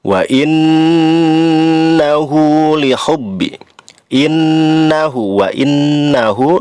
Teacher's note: nun bertasdid, gunnah asliyah, lamanya 3 harokat, harus disertai dengung